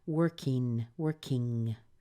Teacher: work and then we have the ing at the end so let's push the K sound over into the ing